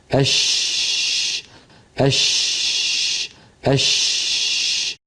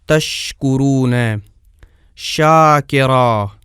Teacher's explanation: یہ بھی درمیان زبان اور درمیان تالو سے ادا ہوتی ہے جیسا کہ ہم دیکھ رہے ہیں، لیکن اس کا مخرج تھوڑا سا کھلا رہتا ہے، نہ کہ جیم کے مخرج کی طرح بند رہتا ہے۔ کھلا رہنے کا مطلب یہ ہے کہ شین کی ادائیگی میں اس کا مخرج بند نہیں ہوتا، جیسے اش، تو اس کی ادائیگی کی جگہ اگرچہ تنگ ہو جاتی ہے لیکن بالکل بند نہیں ہوتی، اور نہ ہی اس کی آواز میں مکمل بندش ہوتی ہے۔